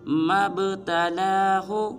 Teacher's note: جب میم کو با ساکن کے ساتھ ملائیں گے تو با کو قلقلہ کریں گے،